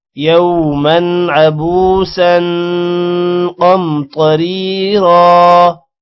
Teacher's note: را کو موٹا نہیں کرنا کیونکہ را کے نیچے زیر ہے